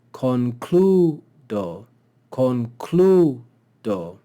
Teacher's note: we see that the penult is long, so we would accent the penult.